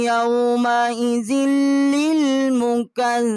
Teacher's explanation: اور زال جو ہے اس کو لام کے ساتھ مشدد کیا ہے